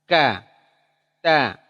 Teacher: Huruf ta dan kaf punya asyiddah dan hams, tertahan tapi hams keluar napas, ya, ditekan.